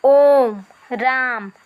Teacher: जिसके उच्चारण में दीर्घ स्वर से कुछ अधिक समय लगे, या जो हमारे ह्रस्व स्वर है इससे 3 गुना समय लगे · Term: प्लुत स्वर